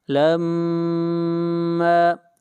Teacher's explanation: میم کے اوپر شد ہے، غنہ ہوگا